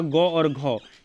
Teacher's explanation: जब इसको हम लोग बोलते हैं तो ये हमारा कंठ से आवाज़ निकलता है, तो इसलिए ये हमारा क्या हो गया, कंठीय व्यंजन हुआ।